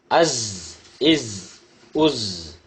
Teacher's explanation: குரல் அழுத்தமாக ஒலிக்க வேண்டும். குரல் விசில் ஓசையுடன் ஒலிக்க வேண்டும் · The tip of the tongue near the inner plates of the upper central incisors. இரு உதடுகளையும் சேர்க்கக்கூடாது, இரு பற்களையும் சேர்க்கக்கூடாது.